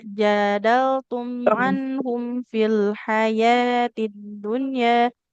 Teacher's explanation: ya-nya ini cuma dua harokat masing-masing